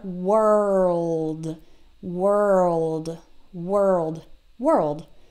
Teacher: notice how I draw out the R and the L and then you try to make it a little shorter world